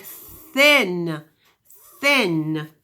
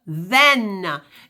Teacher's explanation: If you put your hands right on your throat, your fingertips, say thin, you can hardly hear your neck vibrating, your throat vibrating. But if you say the word then you can hear it vibrate.